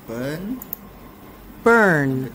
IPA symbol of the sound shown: ɜː